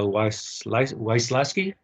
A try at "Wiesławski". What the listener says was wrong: Yeah, actually, you pronounce it Wiesławski, okay, Wiesławski, because the W is pronounced like V in Polish.